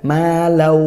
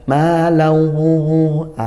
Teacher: ghunah itu makhrajnya dari kisyum dari hidung sehingga masukkan ke hidung juga bukan maau ini kurang pas lebih tepat lagi dimasukkan ke hidung